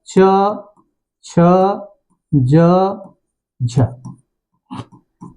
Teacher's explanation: स्पर्श संघर्षी यानी इनके उच्चारण में वायु स्पर्श भी करती है क्या करती है स्पर्श भी करती है और उसके बाद उच्चारण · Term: स्पर्श संघर्षी व्यंजन